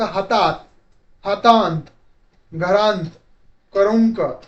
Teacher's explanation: शब्दावर अनुस्वारा स्वरा देण्याची किंवा अनुनासिक नाकातून उच्चार करण्याची प्रवृत्ती खूप मोठी जास्त असते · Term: नासिक्य उच्चारांचे बाहुल्य